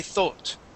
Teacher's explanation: in England you would say thought okay and have more of o sound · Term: more of an O sound